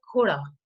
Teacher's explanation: How if we look at the tonogenetic account of this word koda, we can say that again from the Hindi word ghoda, there has been some, the voicing has got lost, and the aspiration has got lost, and this loss of aspiration has given rise to the birth of tone in these languages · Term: falling rising contour